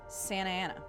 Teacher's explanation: You can tell I have a Californian accent because I skip consonants like T's and Rs kind of disappear.